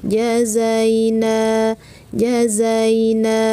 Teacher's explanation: ja berada di tengah lidah , za memiliki getaran